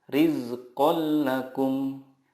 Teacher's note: Idgham bila gunnah adalah nun sukun atau tanwin bertemu dengan lam atau ro. Cara membacanya, meleburkan nun sukun ke huruf berikutnya tanpa gunnah. Contohnya, tanwin bertemu lam, rizqal lakum.